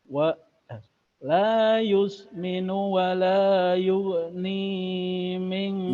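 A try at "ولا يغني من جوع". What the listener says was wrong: Ni-nya terlalu panjang. 2 harokat.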